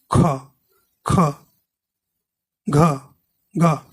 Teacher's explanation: महाप्राण में आपको बोलने में जब बोलेंगे तो थोड़ी सी ज़्यादा वायु निकलेगी